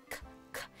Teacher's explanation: So that's actually quite far up for a K sound, because if you just think k, k, you notice that your tongue is making that sound quite far back in your mouth